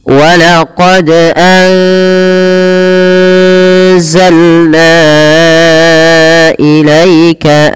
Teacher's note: Pada lafalna wajib kita panjangkan sepanjang 4 atau 5 harokat. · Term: mad jaiz munfasil